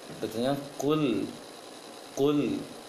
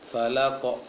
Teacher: Berarti bulat, ketika fathah mulut agak membulat, bukan monyong tapi bulat dia. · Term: Huruf Qaf